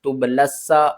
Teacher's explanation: تا با پیش تب، تب، لام کو سین سے ملائیں گے، یا کو بھی نہیں پڑھیں گے، اس الف کو بھی نہیں پڑھیں گے، اس لام کو بھی نہیں پڑھیں گے، ان تینوں کو ہم نے نہیں پڑھنا۔ لام کو ہم نے سین سے ملانا ہے، سین جو ہے وہ مشدد لیٹر ہے